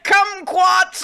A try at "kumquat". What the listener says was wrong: It does seem like you said kumquat with the hard T. It's kumquad. we agreed on kumquad.